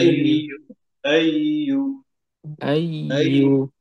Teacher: উপরে তালুতে জিহ্বাটা একদমই কম লাগবে না লাগার মতো অবস্থা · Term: ইয়ার আওয়াজ